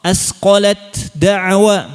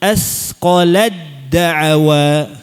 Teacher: Harus hilang bunyi hamsnya. Ya. Harus ditekan makhrajnya langsung ke sifat huruf dal. Ya. Sifat syiddahnya. · Ketika baca idgham mutajanisain harus benar-benar kamil kalau yang ada tanda tasydid di sini. Antum harus benar-benar membuang huruf ta. Jangan ada bunyi ta sama sekali, jangan ada. Meskipun sedikit.